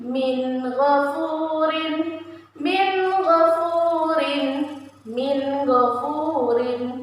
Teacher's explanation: Min ghafurin dibaca jelas, tidak dibaca dengung. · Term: izhar halki